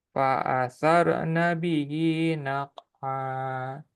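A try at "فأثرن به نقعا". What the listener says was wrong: Qalqalah. Naqa'a. Qalqalahnya keluarin, jangan disembunyiin. Naqa'a. Naqa'a. Naqa'a.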